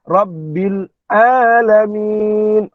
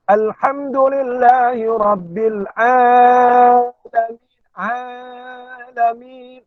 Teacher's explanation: mad asli mutlak alamin 2 harakat. Ada orang baca 4, bacaan dia tidak tepat.